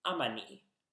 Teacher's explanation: If it ends in a vowel, however, the a sound drops out, so the possessing pronoun is ni, ni.